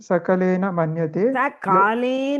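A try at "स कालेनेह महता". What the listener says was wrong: Prabhuji, that is not saka. Sakalena mahata. we cannot say sakale. Sakalena mahata. Because this represents a kala. So we should say sa kalena mahata.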